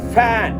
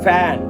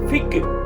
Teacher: எஃப் உச்சரிக்கும் போது மட்டும் அந்த கீழ் உதட்ட மேல் பல்லுல வச்சு உச்சரிங்க